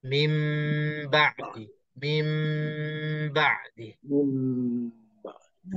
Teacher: Nun mati bertemu dengan ba, maka kita tutup mulut kita untuk nun mati itu dan kita dah rapatkan bibir mulut untuk sebutkan ba dalam dua harakat. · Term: iqlab